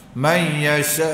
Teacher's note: mad wajib muttasil panjang empat lima harakat